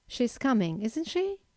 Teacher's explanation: the first usage of a question tag is to formulate a simple yes-no question, but in this case, you have to use a rising intonation.